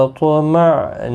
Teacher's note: حمزہ ساکن کو جھٹکے کے ساتھ پڑھیں گے۔ نون ساکن کے بعد حروف اخفا کا تا اخفا حقیقی ہوگا۔ میم ساکن کے بعد پھا اظہار شفوی ہوگا۔